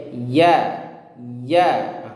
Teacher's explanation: Dan ingat, ditekannya ini juga jangan terlalu ditekan berlebihan, ya, sampai ingat makhraj, ya, tempat keluar huruf iya itu di tengah lidah, ya, hampir tidak menyentuh, ya. Dia ingin ingin menyentuh ke langit-langit atas, tapi tidak tersentuh.